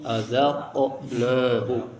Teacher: Ada huruf yang dibaca memantul qqalah yaitu qof.